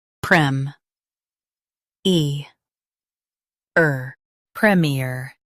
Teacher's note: Stress prem and keep ear light.